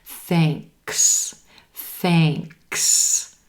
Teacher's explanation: Then we have a K and an S sound together, and you don't want to drop that K